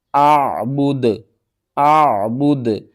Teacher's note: دال کو ساکن کریں گے اور دال کے اوپر قلقلہ بھی کریں گے